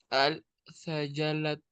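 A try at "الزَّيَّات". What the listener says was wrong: azalaya. Ahí sí se lee ahí no se lee la lam. Azalaya.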